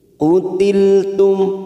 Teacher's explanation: Utiltum mim sukun bertemu fa namanya bacaan idhar safawi kita baca jelas tanpa mendengung